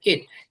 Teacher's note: এখানে টিটা একটু ঠয়ের মতন উচ্চারণ হবে